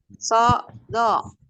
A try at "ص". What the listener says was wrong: Nah, bukan so, do. Tidak di koma. So, do, so, do.